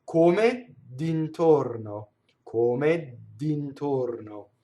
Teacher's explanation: dd'intorno is all closed O's, right? And the R rolls.